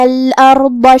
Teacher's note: شققنا، کلمت الارض میں یہاں حرف الراء ہے، راء کا حکم ہے تفخیم، مطلب ہم راء کو بھاری آواز میں پڑھیں گے